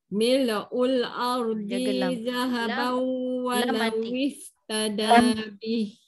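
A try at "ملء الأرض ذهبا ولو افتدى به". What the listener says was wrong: Lah mati jangan mil'. Tak mau mil'ul. Tak mau. Mil'ul ardi zahaban walau iftada bih. Ini pendek. Mil'ul ardi zahaban. Masih panjang lagi di itu. Di itu satu harakat je.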